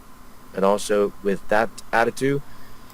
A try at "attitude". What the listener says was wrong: The word is attitude. There is a D sound.